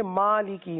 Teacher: میم پر کھڑا زبر جسے 1 الف تک کھینچنا ہے